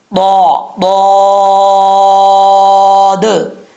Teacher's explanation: زبان کی left side یا زبان کی دونوں سائڈیں آپ نے اوپر والی داڑھوں کے مسوڑوں سے لگانا ہے، تو یہ ضاد پڑھا جائے گا، اور زبان اوپر کی طرف اٹھانی ہے تو یہ ضاد صحیح طریقے سے پڑھا جائے گا، ضاد، ٹھیک ہے۔ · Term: ضاد کا مخرج